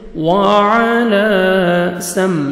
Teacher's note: واو پہ لپس کو راؤنڈ میں لے کے جائیں گے